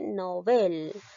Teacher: Por lo tanto, esta palabra llega a ser una palabra aguda porque la mayor fuerza de voz recae en la última sílaba, en bel.